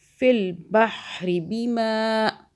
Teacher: دیکھیں را کو نہیں کھینچا، بحری کیا، ری ایسے نہیں کھینچنا نہیں ہے.